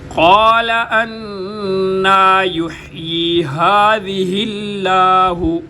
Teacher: ہا کو گلے کے سب سے نیچے والے حصے سے سینے کا زور لگا کر ادا کیا جائے گا۔ ہذہ ذال کو نرمی کے ساتھ، हाज़िहिल्लाह, ये भी हा, दोनों हा को गले के सबसे नीचे वाले हिस्से से।